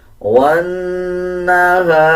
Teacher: نون کے اوپر شد آ رہا ہے غنہ کیا جائے گا اور غننے کی آواز کو ناک سے نکالا جائے گا